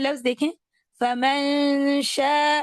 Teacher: फमन आयत नंबर 29 में लख फमन शा अब जो नून का अपना वक्त है उस वक्त में मैंने नून के मखरज को छुपा के गुना किया और फिर मैं अगले हरफ पे चली गई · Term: इफा